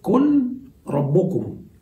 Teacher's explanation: قل ربكم، يحصل الإضغام، قل ربكم، ألفظ براء مشددة